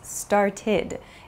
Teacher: It's not an ED sound, but an ID sound.